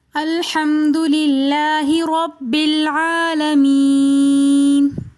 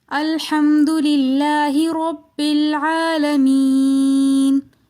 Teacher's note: الحمد کے لام کو ہم باریک پڑھیں گے